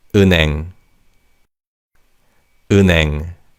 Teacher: in fast speech, the 니은 받침 in the first syllable carries over to the second syllable